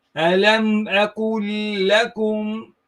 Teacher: So you read this lam, the first lam, into the next lam, so you merge it.